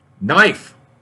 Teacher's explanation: The K in knife is silent.